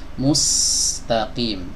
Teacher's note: Dia punya sifat yang namanya safir, suara tajam seperti desis ya, desis yang tajam suaranya. Mustaqim. Ini terkadang ada yang membaca huruf sin ini safirnya malah hilang.